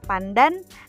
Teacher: dalam kata pandan, nasal sebelum D itu diucapkan secara apiko-palatal. Perubahan nasal apiko-alveolar menjadi nasal apiko-palatal karena pengaruh secara regresif dari bunyi letup palatal.